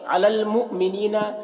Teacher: حمزہ ساکنہ جھٹکا لگے گا